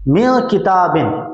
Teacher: गुन्ना ज़मानी होगा, लेकिन नून के अंदर इख्फा होगा, यानी नून को छुपाएंगे · गुन्ना ज़मानी होगा, यानी नाक में आवाज़ ले जाएंगे, लेकिन नून को छुपा कर ले जाएंगे